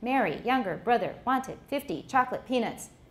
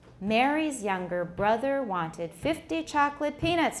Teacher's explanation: we alternated the stresses every other word is stressed and the words in between we didn't stress them because it just was too many stresses so we say it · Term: sentence rhythm